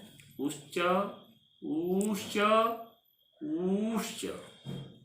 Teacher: यानी एक मात्रिक ऊ, द्विमात्रिक ऊ, त्रिमात्रिक ऊ। एक क्रमशः ह्रस्व दीर्घ और प्लुत संज्ञक होते हैं।